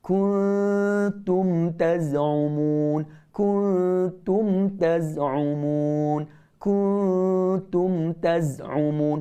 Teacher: Nun mati bertemu dengan ta, ikhfa hakiki. Tak boleh, kita mesti dengung di samping huruf ta. Dengung dulu baru sebut huruf ta. Kuntum, dan dengungnya tidak boleh kita baca dengan tebal.